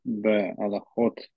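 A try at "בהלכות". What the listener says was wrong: Бейлхот. Бейлхот Если это не смехут, то аллахот. А если это смехут, то мы знаем, что зачастую меняется слово. Чаще всего первое слово. Поэтому вместо аллахот это илхот. Илхот гнева.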